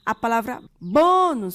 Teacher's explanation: A palavra bônus, sua sílaba tônica é o bó, e aqui não é uma palavra oxítona, tá?